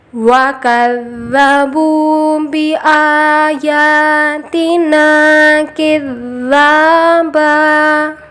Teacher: کو اٹھانا، بِآيَاتِنَا کِذَّابًا، یہاں پر بھی دال پہ تشدید ہے، ذا اور با دونوں کی آواز کو برابر مقدار میں کھینچیں گے